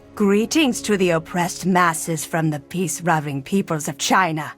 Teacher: Words like leaders are pronounced as readers and peaceloving becomes peacelerving.